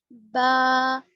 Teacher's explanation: دونوں ہونٹوں کے گیلے حصے سے نکلتا ہے